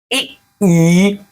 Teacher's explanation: इ ई तालु से आ रही।